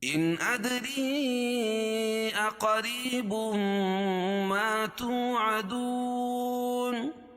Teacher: ادری دال پر قلقلہ اور را کے نیچے زیر ہے تو را کو باریک پڑھیں گے. ادری اقریب دونوں الگ الگ کلمے تو یہاں مد منفصل ہوگا، اس میں توسط ہے اور قصر بھی جائز ہے. قاعدہ ہے کہ حروف مدہ کے بعد حمزہ جو ہے، یہ حمزہ دوسرے کلمے میں ہو تو وہاں مد منفصل ہوتا ہے.